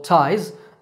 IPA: taɪz